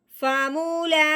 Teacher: لام کے اوپر لگی ہوئی کھڑی زبر، تو لام کے اوپر کھڑی زبر آنے کی وجہ سے اب ہم نے لام کو ایک الف کے برابر لمبا کرنا ہے۔